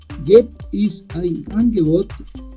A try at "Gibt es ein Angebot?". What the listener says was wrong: Ok, acuérdate que aquí dice no get, sino gibt.